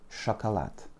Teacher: L'accent tombe sur le A final, donc les deux premiers O se prononcent comme des petits A.